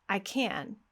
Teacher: when the word can is at the end of a phrase, now it is stressed.